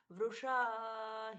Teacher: श षटकोण वाला है तो मूर्धन्य श उच्चारित होना चाहिए